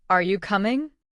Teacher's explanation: Your voice goes up on coming.